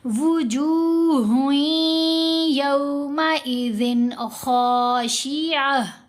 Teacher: آواز کو جب ناک میں پڑھتے ہیں تو غنہ کی مقدار 2 حرکات کی مقدار کے برابر ہوتی ہے، یعنی 2 حرکات کی مقدار اس کو ہم نے لمبا کرنا ہے. تو یہاں ہم نے ہا کو یا سے ملاتے ہوئے غنہ کرنا ہے